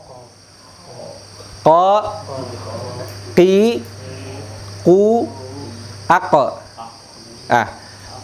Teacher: Dirasakan lidahnya, lidah yang paling belakang. Bertemu, ditempelin dengan langit-langit yang belakang.